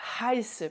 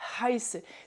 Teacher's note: Le H, en fait, il faut vraiment sentir le souffle qui sort là. Vous sentez sur votre main le souffle chaud.